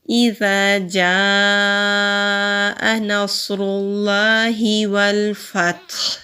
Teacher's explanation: لام جلالہ سے پہلے پیش یا زبر ہو تو لام جلالہ کو موٹا پڑھتے ہیں، اگر زیر ہو تو باریک پڑھتے ہیں۔ یہاں لام جلالہ سے پہلے پیش ہے تو لام جلالہ کو موٹا پڑھیں گے، ہا کے نیچے زیر ہے تو ہا کو کلیئر ادا کریں گے۔